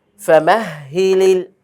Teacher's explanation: এই হা কিন্তু গলায় যাবে না, এর জন্য স্বাভাবিক।